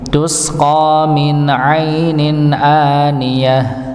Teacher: jadi ketika baca huruf tak marbutah ketika sukun maka nampak h-nya